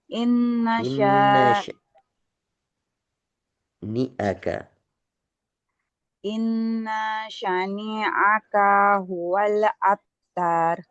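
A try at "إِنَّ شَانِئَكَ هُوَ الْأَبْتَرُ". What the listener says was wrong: Oke, perhatikan panjang pendeknya. N pertama tidak panjang. inasya yang panjang sya yang ditahan. Innya niaka tidak ada yang panjang.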